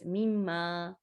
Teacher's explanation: It has hidden noon, because of the tajweed rule. We just merge it. We just do idgham. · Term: idgham with gunna rule